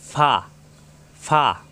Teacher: উপরে দুই দাতের আগা নিচের ঠোটের পেটে লাগবে